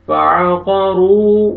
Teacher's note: فعقروا, واو مدہ, را کو آپ نے کھینچنا ہے اور را کو موٹا بھی کرنا ہے